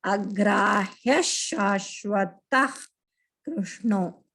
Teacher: In the middle of the pada, the Visarga, if the Visarga is followed by Ka or Alpa Prana Ka or Mahaprana Ka, Ka. So instead of pronouncing the Visarga, we have to say the Ha sound from the throat.